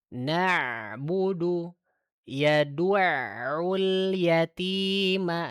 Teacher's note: tawassut itu suaranya tidak terlalu mengalir, tidak juga tertahan. Jadi ada alirannya walaupun sedikit gitu.